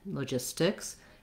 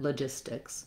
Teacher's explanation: Because that T comes after the S and it doesn't start a stressed syllable, logistics, I am saying a true T there, but I don't really have to do a strong T, logistics. ST blends tend to have kind of a more muted T